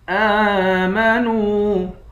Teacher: آمنوا، حمزہ پر کھڑا زبر ہے، اس کو ایک الف کے مقدار کھینچ کر پڑھیں گے۔ نون کو واو سے ملا کر، واو کو بھی ایک الف کے مقدار کھینچ کر پڑھیں گے۔